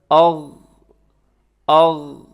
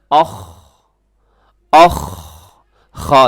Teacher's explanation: جیسے خراٹے میں آواز آ رہی ہوتی ہے تو اسی طرح یہ وہی اس کا جو ہے پراپر صحیح آواز ہوتی ہے، اخ، اخ۔ تو دوسرا مخرج ادنی حلق یعنی حلق کا اوپر والا حصہ، اس سے غین اور خا ادا ہوتے ہیں